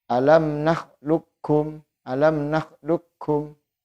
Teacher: Kemudian cara baca yang kedua untuk huruf qaf bisa dibaca dengan idgham kamil. Jadi qafnya tidak dibaca sama sekali